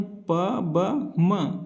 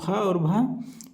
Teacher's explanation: प वर्ण में प, ब, म अल्पप्राण है और फ और भ महाप्राण [नाक से की जाने वाली आवाज़] है।